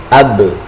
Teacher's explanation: Misalnya kita bisa tahu keluarnya ba itu dari syafatain, dari kedua bibir kita.